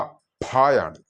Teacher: ചുണ്ട് ചേർത്ത് വെച്ചുകൊണ്ട് വായു പുറത്തേക്ക് ശക്തിയായി വിടുമ്പോൾ കിട്ടുന്ന ആ ഒരു അക്ഷരമാണ് ഫ.